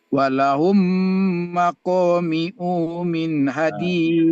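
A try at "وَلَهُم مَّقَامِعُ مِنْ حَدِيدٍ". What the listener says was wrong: Unnya pendek. Walahum maqami'u min.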